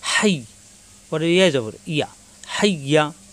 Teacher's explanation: ইয়া তাজদিদ দুইবার, জিহ্বার মাঝখানে উপরে তালুতে লাগবে